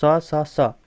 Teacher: सा सा सा ये तो हैं आपके अघोष